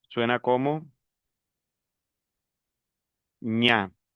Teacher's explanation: Aquí desaparece los sonidos individuales. Es decir, cuando yo pronuncio la G y la N, ya el sonido individual de la G desaparece, el sonido individual de la N desaparece y me viene dando el sonido de ñ. Por ejemplo, si yo uno la eñ con la a, suena como ña.